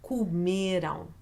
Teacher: even though it has that nasal sound at the end, the sound that is written with an am, it is not the syllable you're going to stress.